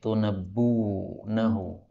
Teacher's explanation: Kemudian ayat 33 tunabbi'unahu ini boleh hamzahnya dihapus sehingga menjadi tunabbunahu dan ini lebih ringan